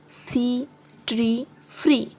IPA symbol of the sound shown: iː